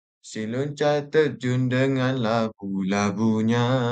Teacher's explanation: Pengulangan perkataan labu-labunya menunjukkan unsur reduplikasi fonologi yang menambah kesan humor dan simbolik. Intonasi mendatar di akhir ayat menggambarkan kesudahan tenang tetapi menyindir.